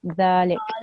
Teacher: If you're going to pause after the qaf, then that fatha will change into a sukoon and you will say dhalik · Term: waqf